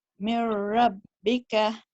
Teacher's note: You did a full idgham there without stretching the sound, the sound for 2 counts.